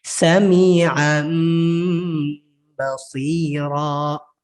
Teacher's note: Bunyi nun matinya atau bunyi tanwinnya tadi dirubah menjadi mim ketika bertemu dengan huruf ba. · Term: iqlab